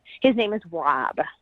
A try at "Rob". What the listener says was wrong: You sound like Yeah, it sounded like that. Wob.